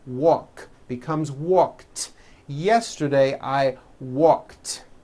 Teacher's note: the word walk which has an unvoiced k sound at the end